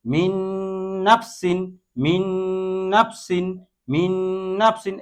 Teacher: এখানে দেখেন এই নুন সাকিনের পরে নুন আসছে, নুন সাকিনের পরে নুন আসছে। এই নুন সাকিনের পরে নুন আসার কারণে এই নুনকে এই নুনের মধ্যে মিলাইয়া তারপর আমরা গুন্নার সহিত মিলাইয়ে পড়ছি